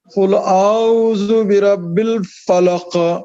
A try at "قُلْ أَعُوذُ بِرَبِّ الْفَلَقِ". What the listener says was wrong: ये रू को और गोल कीजिए قل أعوذ برب الفلق